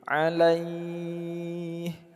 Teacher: Kita panjang dulu laih. Baru akhirnya kita sukunkan huruf ha. Panjangnya boleh di antara 2 sampai dengan 6 harokat sama dengan mad arid li sukun. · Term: mad lin